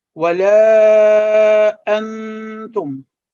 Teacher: The light nasal sound when pronouncing sakin noon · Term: ikhfa rule